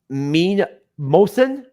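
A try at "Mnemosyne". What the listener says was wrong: The M is silent. It's the just the end.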